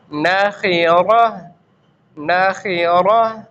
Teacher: یہ گولتا ہے جہاں اگر اس پر ہم وقف کریں گے کہیں پر بھی اس پر وقف کریں گے تو اس کو ہا ساکن کے ساتھ تبدیل کر دیں گے. ہا ساکن کے ساتھ اس کو تبدیل کر دیں گے تو آواز بنے گی ناخرہ ناخرہ.